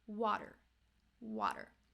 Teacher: a D sound right like it's not water it's water so that flap T is actually it's happening so fast right it sounds like a D sound